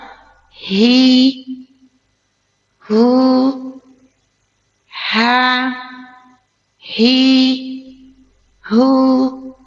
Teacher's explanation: Keluarkan hams roh mengalir napas kita. Istigfal infita. · H itu keluar dari tenggorokan kita paling bawah. Dan huruf H itu huruf yang lembut. Dan di antara huruf dialah yang paling lemah.